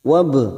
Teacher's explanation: Wab masuk pada ba sukun, kita pantulkan qalqalah sugroh karena mati asli di tengah kalimat, jangan lupa dipantulkan